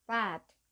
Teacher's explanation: 영어 단어의 끝 스펠링이 유성음일 경우, 그러니까 fad의 경우 유성음은 무성음보다 더 길고요. 더 낮게 발음됩니다. 반면에 끝 스펠링이 무성음일 경우에는요.